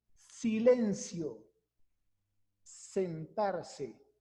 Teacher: El ápice o la punta de la lengua se sitúa entre los dientes inferiores y superiores. Cuando decimos silencio, sentarse, vemos cómo el ápice de la lengua se coloca entre esos dientes. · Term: interdental